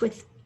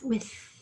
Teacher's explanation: my voice box is actually going to vibrate a little